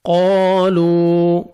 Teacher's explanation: قاف کو موٹا کر کے پڑھیں گے ، واو مدہ، لام کو 1 سیکنڈ آپ نے کھینچنا ہے،